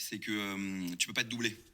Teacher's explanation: être devient ê donc une petite contraction orale